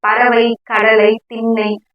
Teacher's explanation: நடுவுல வந்திருக்கு சோ மைங்கிறது வந்து அதுவும் குறைந்து ஒலிக்குது ஒரு மாத்திரை அளவா ஒரு ரெண்டு மாத்திரையில இருந்து ஒரு மாத்திரை அளவா குறைந்து ஒலிக்குது